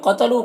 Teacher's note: قتلوا قوف کو پر پڑھیں گے، لو میں جو مد ہے مد منفصل سے 3 4 الف کے برابر کھینچیں گے۔